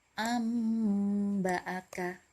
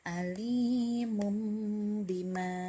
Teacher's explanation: Jadi hanya bertemu dengan huruf ba. Jadi cara membacanya diubah menjadi mim dengan tempo gunnah yang dipanjangkan. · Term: hukum bacaan iqlab